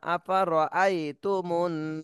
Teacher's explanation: এখানে হরকতের বামে নুনে তাসনিদ ওয়াজিব গুন্না করতে হবে